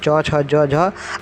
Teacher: च छ ज झ आपके तालु से बोले जाते हैं। जब आप च छ ज झ बोलेंगे तो आपकी जो जीभ है वह ऊपर के हिस्से में पीछे वाले भाग में टकराती है